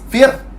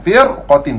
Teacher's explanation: Ra nipis, fir. Tapi disebabkan tuan-tuan sekalian dia main dengan huruf qaf, qaf adalah huruf isti'la, maka kita kena tebalkan firqatin